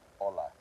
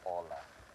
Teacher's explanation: The h is a silent sound. So there's no no sound on the h at all.